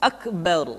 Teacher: huruf ro mesti dibaca tafkhim atau dibaca dengan suara yang tebal